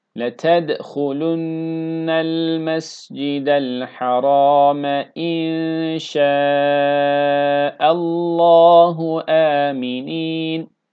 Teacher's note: Şaallahu metni muttasıl uzattık. Yavaş okuşta dört elif.